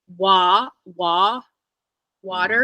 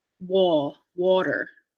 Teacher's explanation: So the mouth is naturally round. So to say not to round the vowel in water is a little bit counterintuitive